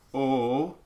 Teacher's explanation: in many accents you'll get an O that gets elongated because they do a pure O, just the first half of that instead of O.